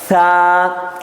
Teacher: ثا کے نکالتے وقت یہ زبان تھوڑی سی ہماری دو دانتوں کے بیچ میں آنی چاہیے، ثا، اس کو کہیں گے ثا۔ · सा के निकालते वक्त ये जुबान थोड़ी सी हमारी दो दांतों के बीच में आनी चाहिए।